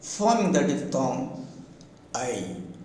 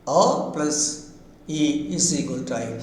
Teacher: A moves towards E, and A and E combine themselves, forming the diphthong I. A plus E is equal to I.